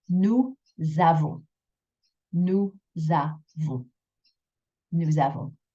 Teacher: You will have that S become a Z sound, like a Z.